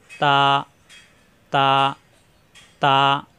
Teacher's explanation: তা জিহ্বার আগা, উপরে 2 দাঁতের গোড়ায় লাগিয়ে ছেড়ে দিলে হয়ে যায় তা